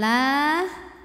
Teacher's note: pada lafaz Allah dibaca secara tipis karena harakat sebelumnya kasrah maka lam ini nyantai bunyinya la tidak perlu mengangkat pangkal lidah